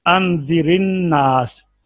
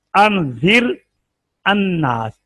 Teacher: अलिफ नहीं पढ़ा जाएगा, लाम भी नहीं पढ़ा जाएगा, तो अनजिर रा को जेर देकर पढ़ेंगे